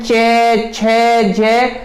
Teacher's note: जब चे वाली लाइन को पढ़ रहे हैं, चे छे जे, तो आपकी जो जीभ है वो तालू से लग रही है, इसलिए इसे बोल देते हैं तालव्य